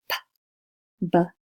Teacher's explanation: Both of these are bilabial stops.